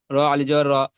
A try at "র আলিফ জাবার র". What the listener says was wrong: আল র আলিফ জাবার র, একালি পরিমাণ টান দিতে হবে না? টান।